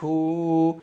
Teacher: دال کو کسی بھی قیمت پر نہیں کھینچنا ہے کیونکہ دال پر سیدھا والا پیش ہے. ہا کو ایک الف کے برابر کھینچیں گے کیونکہ ہا کے اوپر یہ الٹا والا پیش ہے